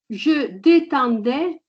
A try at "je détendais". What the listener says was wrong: Parfait.